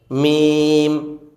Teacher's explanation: মিম উচ্চারণ করেছিলাম দুই ঠোঁটের শুকনা জায়গা হতে